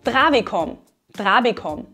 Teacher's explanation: Auch hier sprechen wir den Konsonanten T von travig wieder weicher aus, wie ein D. Deshalb könnten wir auch trabig mit D schreiben.